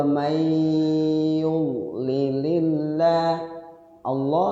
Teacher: lafzul Allah dibaca tarqiq tipis